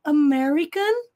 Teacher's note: o r aqui retroflexo enrolando a língua a ponta da língua toca o céu da boca